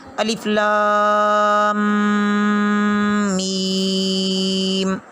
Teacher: شد ادا کرتے ہوئے رک کر ذرا سختی سے شد ادا ہوتی ہے